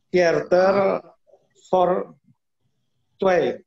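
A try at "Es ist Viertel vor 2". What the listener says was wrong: Hanya saja membacanya bukan Viertel, tapi es ist Viertel ya. Jadi I-nya agak dipanjangin saja. For 2. Es ist Viertel for 2.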